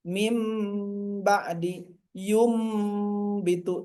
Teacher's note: Mim ba'di bitu, tahan dulu sehingga keluarkan hurufnya dari hidung